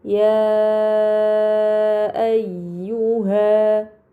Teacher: terdapat mad bertemu hamzah bukan dalam satu kata ini dinamakan mad munfasil maka harus dibaca panjang selama empat atau lima harakat